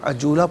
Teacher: دو زبر کی تنوین وقف میں الف سے چینج ہو جاتی ہے